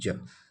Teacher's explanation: स्पर्श संघर्षी है, स्पर्श के साथ संघर्ष करके आता है